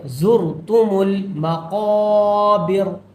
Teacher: حتی زرتم زا کو تھوڑا سختی سے پڑھیں گے، زرتم المقابر، قاف کو تھوڑا موٹا کریں گے اور ایک الف کے برابر کھینچیں گے